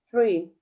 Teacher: I use my upper teeth and the tip of tongue to produce the sound th